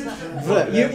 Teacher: there's no hard r sound on the end. It's just vr. You almost don't hear it